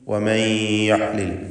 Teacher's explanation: ഫയഹില്ല അലൈക്കും ഗദബി വമൻ യഹ്ലിൽ അലൈഹി ഗദബി, വമൻ യഹ്ലിൽ, സാക്കിനത്തായ നൂനും ശേഷം യാവുമാണ്. ഇത് ഗംബി ഗുന്ന നാഖസ് നൽകി നൂനിനെ യായിൽ ലയിപ്പിച്ച് മണിക്കണം.